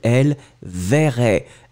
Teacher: bien prononcer le E d'une façon très très très ouverte et très généreuse